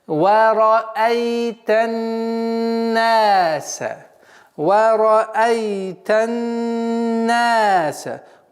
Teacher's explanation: Вот звук согласовки фатха. Уходим на солнечный звук нун и удерживаем в размере 2 огласовок. Так, назализация. · После назализации в размере 2 огласовок мы применяем долготу «наса».